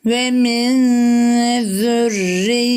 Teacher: cezimli olan Nunu gizleyip sesi genizden getirip bir miktarda tutuyoruz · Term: ihfa